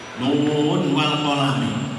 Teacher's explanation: nun wal qalami jika wasol, ya, nun dibaca idhar tidak idgham